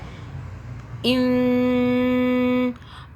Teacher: اس نون پہ ہم نون کو 2 سے 3 سیکنڈ کے لیے غنہ کریں گے